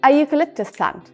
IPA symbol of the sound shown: ju: